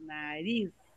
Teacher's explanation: Não tem acento, mas é a última que é a forte.